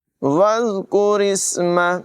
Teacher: ذال جو ہے اس کو بغیر سیٹی کے ادا کریں گے، وز نہیں پڑھیں گے بلکہ وز بغیر سیٹی کے ادا کریں گے۔